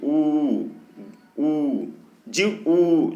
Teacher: जीव ऊपर उठने के कारण संवृत स्वर भी होता है